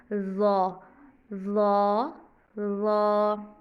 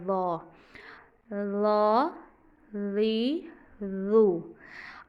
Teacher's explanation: और इसमें आगे लिप्स हमारे राउंड होंगे क्योंकि बोल्ड लेटर्स में हमने आगे से होंठों को गोल शेप देनी है, तो ये लेटर पढ़ा जाएगा ऐसे ज़ा, ज़ा, ज़ा। ज़ुबान निकाल के ऊपर वाले दांत ज़ुबान को टच करेंगे और आगे से हमारे लिप्स राउंड होंगे, तो ये लेटर पढ़ा जाएगा ज़ा, ज़ा, ज़ी, ज़ू। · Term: ज़्वा